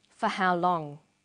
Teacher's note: for how long this is a question too but it has a falling tone